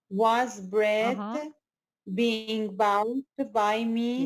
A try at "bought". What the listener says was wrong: But being bought, bought, not bowed. It's not ow, it's ah. Bought, taught, fought, bought.